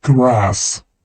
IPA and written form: grɑːs (grass)